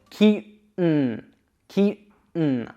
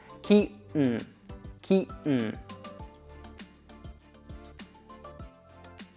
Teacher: when we make that N sound, we're forcing the air to actually pass through our nose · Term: stop T